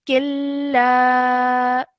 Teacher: just remember to elongate the la out for about 2 seconds because of the alif madda